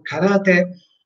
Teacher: Si pronunciano sia la che te con l'accento